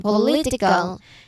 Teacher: The stress is centered in the middle, not at the start or end.